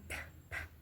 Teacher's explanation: bilabial, produced when both lips close or comes together